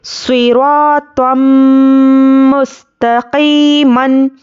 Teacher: را کو پر پڑھنا ہے اور تو کو بھی موٹا پڑھنا ہے